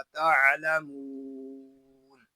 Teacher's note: آگے میم کو ہم کھینچ کر پڑھیں گے کیونکہ یہاں واو مدہ ہو رہا ہے اور وقف میں یہاں ہوگا مد عارض